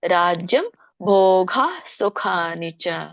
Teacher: ಭೋಗ ಸ್ವಲ್ಪ ಹ ಬರಬೇಕು